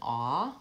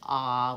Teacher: aw with the rounding and AH which is just an open vowel